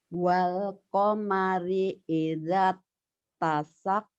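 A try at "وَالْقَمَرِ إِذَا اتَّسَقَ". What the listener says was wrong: Wal qamari idat tasak. Kok kayak digigit? Ini latihan ini ya biar dari da ke ta. Kalau sudah bagus, mulut ini nggak ada gerakan.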